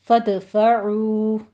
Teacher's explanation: فدفعو میں بھی دال کی آپ نے قلقلہ ادا کرنا ہے اور جوائننگ جلدی سے کیجیے تاکہ درست ادائیگی ہو۔